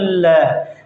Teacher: जब आप ल का उच्चारण करोगे तो जो जीभ है वह तालू के ऊपर लग जाएगी और जो हवा है दोनों तरफ से बाहर आएगी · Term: पार्श्विक व्यंजन